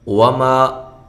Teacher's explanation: وما یہ الف مدہ ہے اور ہونٹوں کو گول کرتے ہوئے واو کو ادا کرنا ہے